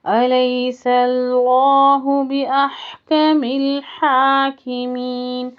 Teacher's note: لفظ جلالہ سے پہلے زبر ہے تو اس کو پر کریں گے